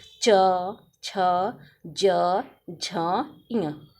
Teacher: यह तालू के स्पर्श करते हुए निकलती है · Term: तालव्य व्यंजन